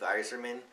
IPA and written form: ˈaɪzərmən (Yzerman)